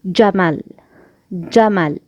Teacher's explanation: Letter JEEM is emitted from the middle of the tongue and the roof of the mouth that lies opposite to it against the hard palate. The hard palate here, and this is the tongue, the middle of the tongue.